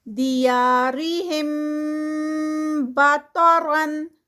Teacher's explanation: اور تا جو ہے وہ ہیوی ہے، اور اینڈ پہ را بھی، بطرن پہ را بھی ہیوی ہے